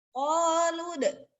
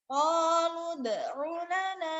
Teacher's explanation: jangan lama dulu mentang-mentang di depannya ada waw ya. Itu langsung masuk ke da. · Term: qalqalah